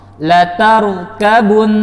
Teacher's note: Asal katanya latarkabunna. Ketika waqaf, latarkabun, maka kadar gunnahnya tidak berkurang, yaitu 2 harokat atau 3 ketukan.